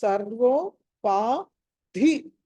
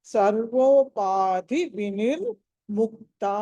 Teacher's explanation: ధ అన్నది మహాప్రాణము ఒత్తి పలకాలి